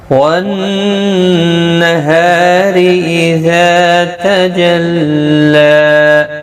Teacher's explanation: والنہار نون مشدد پر غنہ ہوگا، ہا الف مدہ ہے، ایک الف کی مقدار کے برابر کھینچیں گے. را زیر کی وجہ سے باریک پڑھا جائے گا. ذا الف مدہ ہے، ایک الف کی مقدار کے برابر کھینچ کر پڑھیں گے.